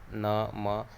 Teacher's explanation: अनुनासिक हैं, जिनके बोलने में क्या है, नाक से भी स्वर आता है